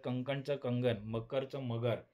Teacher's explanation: जेव्हा कठोर अघोष ध्वनी मृदू घोष होतो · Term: घोषीकरण